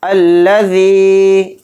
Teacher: ذال کے ساتھ یا مدہ ہے تو ذال یا زیر ذی کو تھوڑا کھینچ کر پڑھیں گے